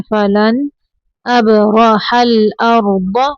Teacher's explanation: नून को सिर्फ जाहिर करना है